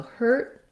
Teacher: i just said that with a stop t